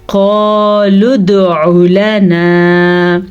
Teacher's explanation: इस लाम को लंबा नहीं करेंगे क्योंकि लाम के ऊपर सिर्फ ज़बर है, लेकिन नून ज़बर अलिफ ना, अलिफ मद्दा की वजह से हमने इसको खींच के पढ़ा लना।